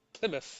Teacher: Scots tends to pronounce the final TH sound for a F in Plymouth